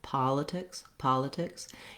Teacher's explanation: You probably can say politics or politics, doesn't matter too much because those second two syllables both just have reduced, very fast vowels. I wrote it here with the la just because I want you to think about really going quickly over it. · not having any kind of E-like sound for these letter I's